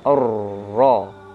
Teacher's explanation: Ro itu tebal. Ta itu tipis di sini. Ro itu tebal karena dia harokat fathah. Nah, jangan sampai ta yang tipis itu menyebabkan si ro menjadi tipis juga. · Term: tafkhim